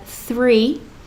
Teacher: It's not a buzzy sound, it's a soft TH sound.